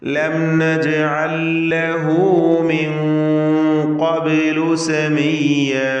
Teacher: ശേഷം ഖാഫ് തഫ്ഖീമിൻ്റെ ഹർഫാണ് എന്നതുകൊണ്ട് മിൻ എന്നിങ്ങനെ മണിച്ചിൽ തഫ്ഖീമോടുകൂടി മണിച്ച് ഉച്ചരിക്കണം. മിൻ ഖബ്ലു, ഖബ്ലു എന്നതിലെ ബാഇൻ്റെ സുക്കൂൻ ഖൽഖല സുഗ്റ നൽകി ശബ്ദം ഹറക്കത്ത് പോലെ ചലിപ്പിക്കുക